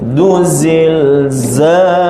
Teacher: Sebab goncang segoncang-goncang, huruf za itu pun sifatnya memang dia perlu sofirnya tu kuat